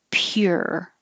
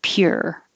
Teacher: your tongue starts in a high position pure so it looks like a u but it sounds like an ER